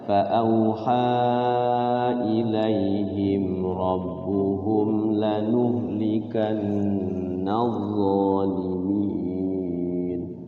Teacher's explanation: himnya sama humnya enggak ditahan ya, idhar syafawi